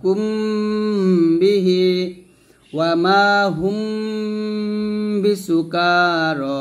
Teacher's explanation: ইখফা শাফবি হরফ হলো বা। আর যখন আমরা মিম সাকিনের পরে বা পাবো তখন আমরা গুণনা করব